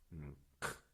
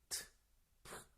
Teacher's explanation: 트, 프 이렇게 목에서부터 쭉 끌어올리는 소리 거센 소리라고 해요.